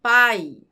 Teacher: A palavra pai é formada por uma única sílaba com a consoante P, a vogal A e a semivogal I. Note que quando eu falo a palavra pai, o A é muito mais forte que o I. Por isso é classificado como ditongo decrescente.